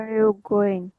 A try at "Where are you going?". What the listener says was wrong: Where are you going? Where আপনি একটু pitch higher করবেন because you're asking a question, but the intonation, the higher pitch should be focused on the lowest term. Where are you going?